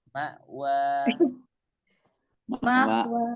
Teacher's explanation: ketika di sana ada hamzah, maka pita suara kita itu tertutup. Nah, ketika dia di wa, itu jangan tutup dulu sampai suara kita hilang.